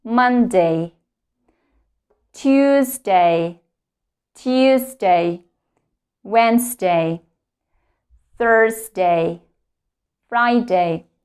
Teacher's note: yes we actually don't put the stress to the words day the primary stress is on the first syllable